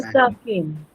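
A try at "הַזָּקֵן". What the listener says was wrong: Super.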